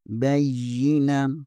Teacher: با کو یا کے ساتھ ملائیں گے، یا کے اوپر شد ہے، اور یا حروف یرملون میں سے ہے، جہاں پر غنہ بھی ہوگا